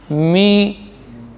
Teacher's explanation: Ini mim paduan dua bibir dengan khayshum. Ini termasuk huruf khayshum.